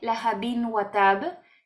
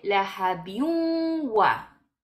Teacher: Eso no se lee la habin watab, se lee la habiun wa. Vamos desde la kasratein a la wau y pronunciamos la wau como si tuviera una shedda. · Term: idgham